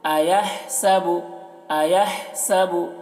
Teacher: یہاں پر ہا کو حلق سے ادا کریں گے